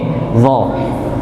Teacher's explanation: Dha ini tempatnya seperti pada huruf dzal, hanya saja dha itu tebal. Maka dengan cara diangkat pangkal lidahnya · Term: huruf dha